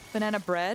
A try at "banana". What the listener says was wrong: You say banana so quickly. Banana. You sound like a little minion. Banana. Banana. You gotta give a word time, you know? It needs to have mouthfeel.